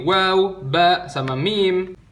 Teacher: 2 buah bibir ketemu